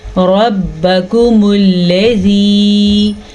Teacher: لام کو لمبا نہیں کرنا، لام کے اوپر زبر ہے، اور لام کو پر بھی نہیں کرنا، کیوں اکثر لوگ پڑھتے ہیں ربکم الذی یعنی لام کو پر کر لیتے ہیں، لام کو پر کرنا جائز نہیں ہے، یہ حرام ہے، ٹھیک ہے۔ لام کو ہم باریک پڑھیں گے